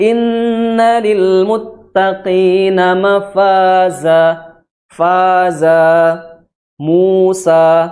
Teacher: Jadi mafaza, bukan mafaza, bukan, tapi sama, ya. Karena mad iwad posisinya sama dengan mad tabi'i. Jadi hukumnya dua harokat.